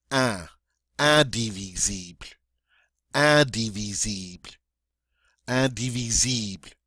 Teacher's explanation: And in French, we have this nice nasal sound at the beginning, this IN, which is the un.